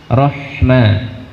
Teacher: tampakkan Hamas keluarnya nafas dari huruf H